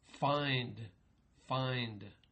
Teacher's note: you don't hear a N sound in sank. And the same thing in find, find. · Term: Preconsonantal nasals